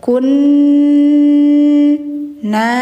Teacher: Jadi bacanya gar qo dua harakat hukumnya mad ii wad wanna ziati gharqo [Musik] waunna nun bertasydid harus Harus ditahan dulu bacanya, didengungkan dulu. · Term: Gunah musyaddadah